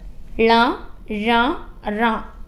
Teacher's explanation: ള ഴ റ ഇവയും മൂർധ ഉപയോഗിച്ച് ഉച്ചരിക്കുന്നതാണ് ള ഴ റ ഇവയും നമ്മുടെ ടങ്ങ്ക് മുകളിൽ തട്ടുന്നതാണ് ഏതു ഭാഷയും പഠിക്കുമ്പോൾ